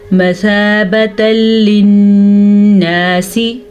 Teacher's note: मसाबतल यहाँ पे इदगाम बिला गुन्ना का कायदा हो रहा है, यानी कि जब इस तरह की दो ज़बर दो ज़ेर दो पेश आ जाए और उसके बाद लाम आ जाए या रॉ आ जाए, ठीक है, नून साकिन के बाद या तनवीन के बाद तो इनको आपस में मिला देते हैं और गुन्ने के बगैर मिलाते हैं